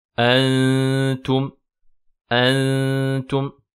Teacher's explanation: ce n'est qu'une fois arrivé à la lettre ta que la langue touche donc le palais